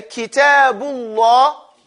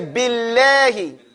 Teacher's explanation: Whenever you say Allah or Kitabullah, say Kitabullah. You're saying the lamb with a fakhm, a round mouth. You're saying it like you're making the lamb fat.